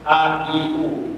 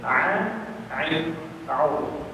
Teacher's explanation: Cuma bezanya adalah kalau hamzah keluar daripada kerongkong bawah, a, i, u. Tapi kalau ain keluar daripada kerongkong bahagian tengah